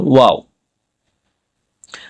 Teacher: ওয়াও হরফটি উচ্চারণ করতে গেলে আপনাদের ঠোটটি গোল করতে হবে এবং ঠোটটা খোলা রাখতে হবে।